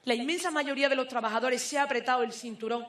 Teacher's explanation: El siguiente rasgo es la aspiración de la fricativa velar sorda